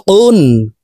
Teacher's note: কাফ হরফের উচ্চারণ জিব্বার গোড়া থেকে একটু আগে বাড়িয়ে তার বরাবর উপরের তালুর সঙ্গে লাগাইয়া উচ্চারণ করে পড়ব।